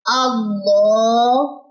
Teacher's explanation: لام کے اوپر کھڑا زبر ہے تو اس کی مقدار تھوڑی سی زیادہ ہو جائے گی، غالباً کہہ لیں 2 سیکنڈ.